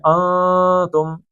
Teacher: ناک میں نون کو تھوڑا سا کھینچ کے پڑھنا ہے